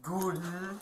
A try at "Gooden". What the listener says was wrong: It's not a long O, it's just Gooden. Gooden, yep. That sounds like you're pronouncing it with a German accent, I guess.